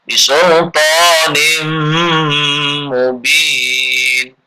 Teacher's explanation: Ketemu dengan mim jadinya mim melebur ke mim. Dan dengung. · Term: idgham bi gunnah